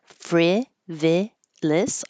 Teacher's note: You can use the us or you can use the is because it's the same reduced I or vowel. Frivolous, all the same, or frivolous.